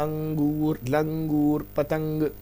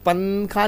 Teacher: نون کی آواز ناک پہ تو جاتی ہے لیکن نون پورا نہیں پڑھتے پنکھا میں۔ اور اسی طرح آپ کی زبان تالو کو نہیں لگتی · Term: اخفاء